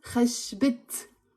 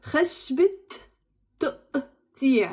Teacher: if you want to say a wood of something, like in this case, a wood of cutting, you pronounce the ت مربوطة and it becomes خشبت.